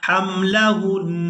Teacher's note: ہم نے نون پر زبر کو ادا نہیں کرنا، ہا کو نون مشدد کے ساتھ ملانا ہے اور غنہ کے ساتھ ادا کرنا ہے